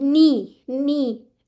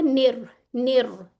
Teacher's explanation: फिर उसके बाद ये देखिए जेर आ रही है ना, स्पेशल इसका ख्याल रखना, ने वाली साउंड नहीं आनी चाहिए